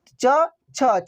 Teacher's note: च वर्ग का उच्चारण तालू से होगा